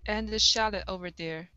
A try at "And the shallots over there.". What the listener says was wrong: Okay, give me a TS at the end instead of shallot. It's shallots. Shallots over there.